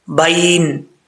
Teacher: اور یہاں پر بھی با کے بعد یا لین ہے، یا مدہ نہیں ہے، ٹھیک ہے، اس لیے اس کو لمبا نہیں کریں گے